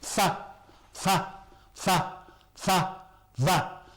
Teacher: So the fa is made with the lower lip and the teeth. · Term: fricatives